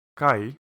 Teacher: With a grave accent the tone goes down